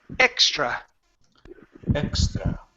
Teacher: You need to remove the H. You cannot pronounce a vowel at the beginning with an H at the beginning.